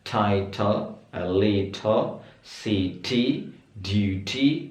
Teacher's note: T yang di tengah ya teman-teman. T yang di tengah itu pengucapannya jelas banget